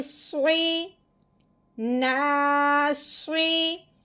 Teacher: صاد کے نیچے لگی ہوئی ہے زیر. صاد کے نیچے زیر ہو صاد کے اوپر پیش ہو صاد موٹا ہی پڑھا جاتا ہے